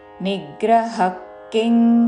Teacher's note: నిగ్రహ తర్వాత విసర్గ ఉచ్చారణ ఖ లాగా